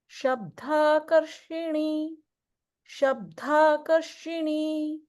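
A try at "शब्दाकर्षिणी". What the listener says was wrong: So in a few places, it's when you're saying like a da sound, it's sounding a little bit like a mahaprana dha. So just keep an eye out for those when it's just regular.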